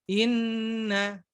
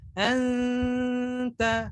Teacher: Nun bertasydid dan mim bertasydid itu lebih lama dibandingkan dengan ikhfa.